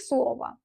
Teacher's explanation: İkinci o isə vurğusuz olduğu üçün tələffüzdə a səsini verir.